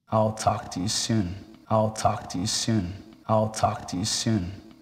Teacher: the words talk and and soon receive the stress